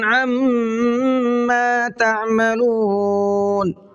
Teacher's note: عما میم میں غنہ کریں گے اس لیے کہ میم پر تشدید ہے